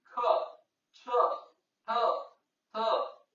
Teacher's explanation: ಹೆಚ್ಚಿನ ಉಸಿರಿನಿಂದ ಉಚ್ಚರಿಸಲ್ಪಡುವ ವ್ಯಂಜನಾಕ್ಷರಗಳನ್ನು ಮಹಾಪ್ರಾಣಗಳು ಎನ್ನುವರು